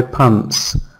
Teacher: in the spelling of this word, we don't hear T sound.